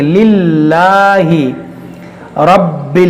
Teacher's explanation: را کو موٹا کریں گے، با حروف قلقلہ ہے، حروف مشدد بھی ہے، تو اس کو دو بار پڑھیں گے اور خوب جماؤ کے ساتھ پڑھیں گے